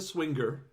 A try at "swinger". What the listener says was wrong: You have to use a hard G when you say swinger.